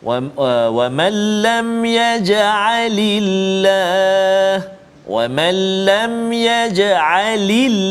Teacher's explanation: jika sebelumnya berbaris di bawah, maka huruf lam tadi, maka cara baca dia adalah nipis ataupun tarqiq